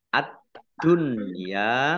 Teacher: alif lam syamsiyah karena tidak dibaca langsung masuk ke huruf berikutnya yaitu Dal